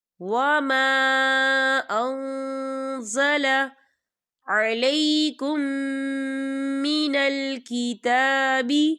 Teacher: ہزوا واذکروا نعمت اللہ علیکم وما انزل، یا دیکھیں وما، خالی الف سے پہلے زبر ہے، الف مدہ بھی ہو رہا ہے اور اس پر مد بھی ہے، تو ہم اسے چار حرکت کے برابر کھینچ کے پڑھیں گے